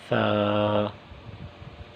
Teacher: ثا، ثا کا مخرج، ثا کی ادائیگی کی جگہ وہ زبان کی نوک اور اوپر والے درمیان کے جو دو دانت ہیں ان کا سرا۔ ثا، یہ ثا کی ادائیگی کی جگہ ہے، ثا کا مخرج ہے، ثا۔